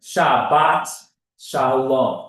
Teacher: in modern Hebrew or Sephardim, they're always going to put the stress on the end of the word